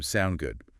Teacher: the short form sound good again with that upward inflection